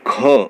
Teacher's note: जैसे हम क और ख बोलते हैं तो ख में हमारे मुंह से ज़्यादा वायु निकलती है, तो ये महाप्राण हुआ